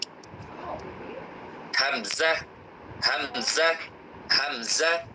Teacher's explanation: সূত্রটি হচ্ছে আলিফে যখন জের জবর পেশ অথবা সুকুন তাসদিদ পাওয়া যায় আলিফকে তখন হামজা বলা হয়। আর এই হামজা অক্ষর হলকের শুরু হতে শক্ত করে পড়তে হয়।